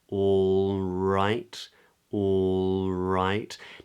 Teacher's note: tip of the tongue comes up for the L · Now that L in the word all is a dark L, which I haven't got time to go into too much detail here in this video, but what you need to know is the back of the tongue is raised for a dark L.